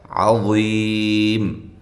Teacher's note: عین کو واضح نکالیں، وا کو موٹا کرتے ہوئے، اور یہ یا مدہ ہے اور وقف کی صورت میں مد کر سکتے ہیں.